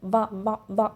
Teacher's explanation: వా అంటే పైపళ్ళు అనేటివి కింద పెదాన్ని తగులుతున్నాయి, అంటే దంతాలు అనేటివి కింద పెదం ఓష్ట్యాన్ని తగులుతున్నాయి అనమాట. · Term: దంతోష్టం